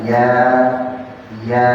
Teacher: Wasatul lisan tengah lidah naik ya menyentuh sini ya. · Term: Harful ya